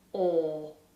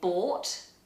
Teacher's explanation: In British English, this is a huge space inside the mouth, the lips are rounded, and the vowel doesn't move. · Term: or vowel